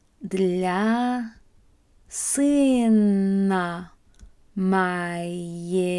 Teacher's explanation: those G's are actually getting pronounced as a V sound